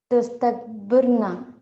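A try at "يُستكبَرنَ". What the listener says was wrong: Yustakbarna. So you have to start with U, right? Yustakbaru. U-a. So you can't change these two harakat throughout.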